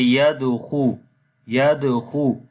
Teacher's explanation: here is weak kalkala as the kalkala letter is coming in the middle of the word